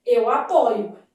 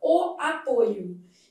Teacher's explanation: Eu vou ler isso aqui, mesmo não tendo acento, como aberta. Já o substantivo derivado do mesmo verbo apresenta a vogal O fechada